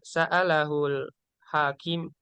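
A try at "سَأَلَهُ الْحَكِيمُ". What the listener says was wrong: sa'alahul hakimu. Harus dibaca ya akhir katanya. Ini soalnya kiroah.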